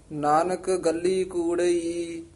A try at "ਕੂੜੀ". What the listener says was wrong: ਕੂੜਈ ਨਹੀਂ ਕਹਿਣਾ। ਕੂੜੀ ਕੂੜੀ ਇਹਨੂੰ ਤੇਜ ਉਚਾਰਨ ਇਕੱਠਾ ਹੀ ਕਰਨਾ ਹੈ। ਨਾਨਕ ਗੱਲੀ ਕੂੜੀ ਕੂੜੋ ਪੱਲੇ ਪਾਏ।